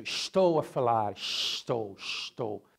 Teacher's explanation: So if you go to Rio, the carioca accent has a lot of influence from Portuguese, especially the sh sound is like sh all the time. So estou a falar, estou, meu irmão, like it's very, and the S is very pronounced in this accent in Rio.